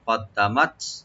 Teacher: তা সাকিন হবে এখানে, আমরা একটু হামস করবো এখানে